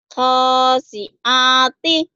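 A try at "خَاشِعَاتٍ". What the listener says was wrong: Sinnya hilang ya, belum punya sin. Khosi. Sin ini hutang ya.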